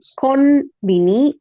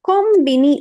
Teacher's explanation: If you have the following kana sound, in that case you will pronounce it with m. So you can pronounce this as n, konbini, or kombini also okay, because the third katakana is b.